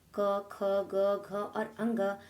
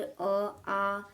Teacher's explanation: इन सभी वर्णों का उच्चारण कंठ के द्वारा किया जाता है और कंठ से उच्चारण की जाने वाले वर्णों को कंठ वर्ण